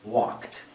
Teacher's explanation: The final sound is k. If that final sound is a k, then the ed sounds like a t. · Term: t sound